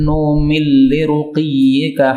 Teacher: kalau nun ketemu lam maka menjadi idgham